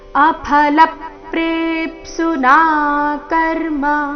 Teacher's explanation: ಅಫಲಪ್ ಲ ಮೇಲೆ ಪದ್ದು ಆಘಾತ. ಲಪ್ ಪ್ರೇಪ್ಸುನಾ, ಪ್ರೇ ದೀರ್ಘ ಬಂದು ಆಘಾತ, ಮುಂದೆ ಅರ್ಧ ಪ ಪೂರ್ತಿ ಸು ಇದ್ದ ಕಾರಣ.